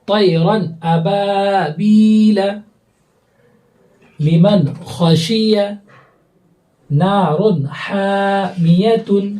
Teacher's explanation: نون کی آواز کو ہمیں ظاہر کر کے پڑھنا ہے، بالکل غنہ نہیں کرنا ہے، آواز کو ناک میں روکنی نہیں ہے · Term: اظہار